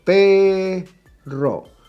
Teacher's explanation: Pe is the stressed syllable and is the second to last.